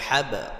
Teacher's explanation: তাহলে আমরা ফি জি দুই জায়গায় টান হবে, দাল জের দি, হা আলিফ জবর হা, জবরের পরে খালি আলিফ এক আলিফ টেনে পড়তে হবে, দিহা, হা বা জবর হাব, বা এখানে সাকিন হওয়ার কারণে কলকলা হবে